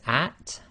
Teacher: at and that's exactly the same as the English word at notice you have to let a little bit of air through the teeth at the end